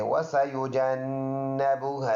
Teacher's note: یہ الف مدہ ہے، یہ نون مشدد ہے، ایک الف کے اندازے سے ادھر غنہ ہے